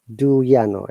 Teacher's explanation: in british english do you becomes do ya